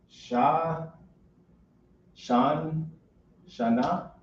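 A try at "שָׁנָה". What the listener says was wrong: Perfect. That's years.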